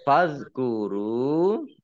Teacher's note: zal sukun itu bukan kolkolah ya jangan dimantulkan ya